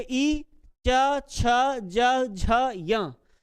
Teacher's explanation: य का उच्चारण स्थान तालु होता है।